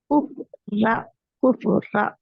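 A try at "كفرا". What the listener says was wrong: ரா ர அல்ல ரா எப்படி சொல்லணும் ரா குஃப் ரா குஃப் ரா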